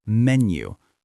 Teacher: And stress menu on the first syllable, menu.